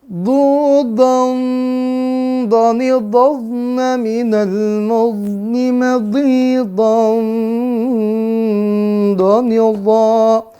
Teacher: karena do ini huruf tebal, maka bunyinya pun ikhfanya berbeda dengan bunyi huruf tipis